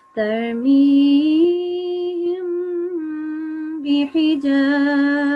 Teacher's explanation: this meme has been prolonged for 2 seconds with a light ghunna sound, nasal sound. And I did that because this meme sakin was followed by a ba. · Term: Ikhfa meme sakin